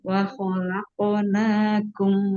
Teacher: Huruf qaf ketika qalqalah sughra memantulnya ke huruf o.